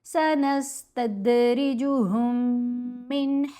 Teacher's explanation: ساکن میم اب خاموش ہو جائے گی یا یوں کہہ لیں مرج ہو جائے گی مشدد کے اندر. ہم نے ہا کو غنہ کرتے ہوئے مشدد میم سے ملانا ہے.